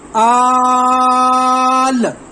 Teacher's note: اس کا کریں گے، حمزہ کھڑی زبر بڑی مد لام آل، اب یہاں پہ آل کے اوپر لام کی آواز ختم ہوگی، سکون اصلی ہو گیا